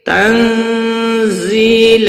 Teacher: تنزیل نون ساکن کے بعد حروف اخفاء کا زا آیا ہے، اخفاء حقیقی ہوگا، زی یا مدہ ہے، 1 الف کے برابر کھینچ کر پڑھیں گے۔